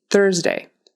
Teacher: Thursday has that Z sound in the middle. It's not an S, it's a Z.